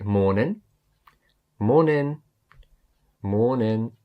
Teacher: I'm saying morning but I'm not really pronouncing the G say morning morning so you're just ending on the ends and